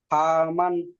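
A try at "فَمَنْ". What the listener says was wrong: ফা টান হবে না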